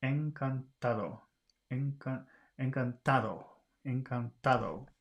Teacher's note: The ta is the stressed syllable, and all of the other ones are weak.